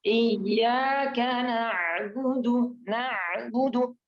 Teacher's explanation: huruf ainnya ya harus ke dalam lagi biar di tenggorokan bagian tengah